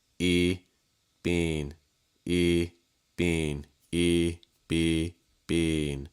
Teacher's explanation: The key is to hold your vowel long enough before you add the N. Don't add it too soon.